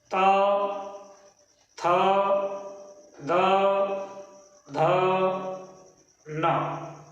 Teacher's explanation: इसी प्रकार हिंदी वर्णमाला का त वर्ग अर्थात ता, थ, द, ध, न, ये दंत कहलाते हैं क्योंकि इनका उच्चारण स्थान ऊपरी दंत, ऊपर के दांतों